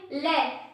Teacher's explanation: अगर फ्रेंड्स हम ले का यूज करते हैं ले, तो हमारी जीभ मसूड़ों को छूती हुई बेलनाकार शेप ले लेती है, अर्थात जो प्राणवायु होती है वो साइड से निकलती है, अर्थात साइड से निकलेगी। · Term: पार्श्विक